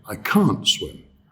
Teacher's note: So when it's negative, we do stress it.